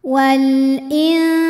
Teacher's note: Maka lam sukun dibaca jelas, izhar qamari.